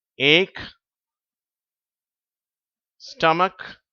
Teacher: சிஎச் சேரும் போது இந்த இச் என்ற உச்சரிப்பு வராது அதுக்கு பதிலா இக் என்ற உச்சரிப்பு தான் வருது